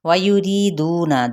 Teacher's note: را باریک پڑھا جائے گا مد اصلی بالیاء